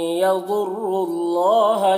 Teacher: اور یہاں پر دیکھیے یہ واو اور یہ دونوں الف اور یہ لام کو نہیں پڑھا جائے گا، را کو لام سے ملا کر پڑھیں گے اور اللہ کے لام کو پر پڑھیں گے